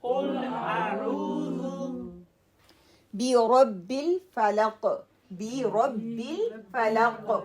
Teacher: قاف قلقلہ ہے, heavy letter ہے